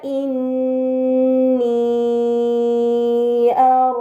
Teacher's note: ini dinamakan Mad munfasil karena Mad bertemu Hamzah bukan dalam satu kata maka harus dibaca panjang selama empat atau lima harakat